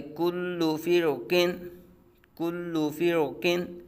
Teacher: اب فرقن ایک کلمہ ہے، ٹھیک ہے جی، تو فرقن کے را ساکن سے پہلے فا کے نیچے زیر آ گئی اور را ساکن کے فوراً بعد حرف مستعلی آ گیا ایک ہی کلمے میں، تو یہاں را کو پور پڑا جائے گا